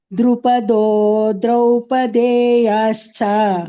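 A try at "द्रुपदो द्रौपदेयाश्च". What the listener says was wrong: Don't, Drupado, don't drag too much. Only two matrakala. Drupado Draupadeyascha.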